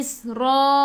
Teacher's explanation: Ra baca dengan tebal, ra baris atas tafkhim